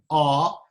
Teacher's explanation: The first vowel, A, is guttural, so that's pronounced almost on the throat